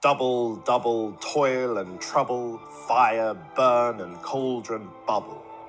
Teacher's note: the two syllable long trokey a stressed syllable followed by an unstressed one